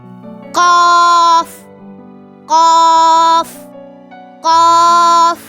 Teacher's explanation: The Qaf sound is produced when the uvula is touched with the back portion of the tongue. The uvula is a small hanging piece in our throat, like a bell.